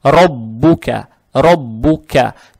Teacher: Каф читается, произносится мягко. Так же как и фатха.